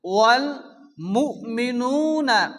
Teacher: হামজা সাকিন ঝটকা হবে